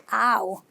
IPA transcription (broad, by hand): aʊ